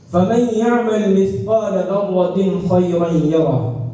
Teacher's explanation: یعنی تنوین سے خا کی طرف انتقال بلا کسی تاخیر کے سرعت کے ساتھ ہوتا ہے